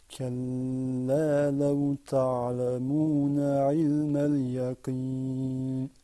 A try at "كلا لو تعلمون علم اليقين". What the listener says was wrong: I want to hear you say yaqeen with the qaf.